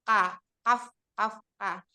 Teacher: Dia hames tetapi suara tertahan syiddah. Kemudian pangkal lidahnya turun istifal, kemudian rongga mulutnya terbuka infitah, dan cara mengucapkannya sulit atau ismat.